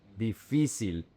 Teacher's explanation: The emphasis is in fi. Difícil. It's not difícil.